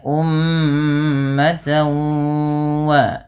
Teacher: Kemudian cara membacanya disertai dengan bacaan ghunah. yang mana cara membacanya adalah memasukkan bunyi tanwinnya kepada huruf wau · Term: idgham